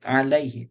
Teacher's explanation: Tidak sesuai dengan mad tabi'i, tidak masuk kaidah mad tabi'i, maka disebut dengan mad layyin. Alaihi, tak ada panjangnya. Tapi tetap ada satu ketukan. Tak boleh dibaca alaihi.